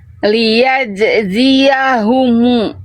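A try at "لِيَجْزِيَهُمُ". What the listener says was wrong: Oke, lebih bagus.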